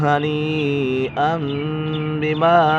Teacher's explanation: نون ساکن یا تنوین کے بعد حرف با جائے تو اقلاب ہوگا، یعنی نون ساکن اور تنوین کو میم سے بدل کر اخفا کریں گے، یعنی گنہ کر پڑھیں گے